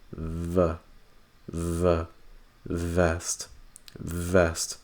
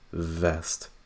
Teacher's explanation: To make the V sound, you want to have your top tooth make contact with your bottom lip.